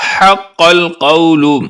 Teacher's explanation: دونوں قاف دو نقطے والے ہیں، ان کو پر یعنی موٹی آواز میں پڑھیں گے